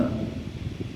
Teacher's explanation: touching with the teeth but the sound is coming through the nose